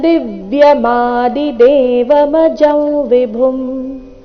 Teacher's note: ದಿವ್ಯಂ ನಲ್ಲಿನ ವ್ಯಂಜನ ಮ ಮುಂದಿನ ಚರಣದ ಆ ಸ್ವರ ಆ ಜೊತೆಗೆ ಸೇರಿ ಅದು ಪೂರ್ಣಾಕ್ಷರ ಮ ಆಗುವುದು